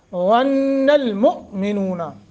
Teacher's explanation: حمزہ ساکن ہے، جھٹکا دینا ہے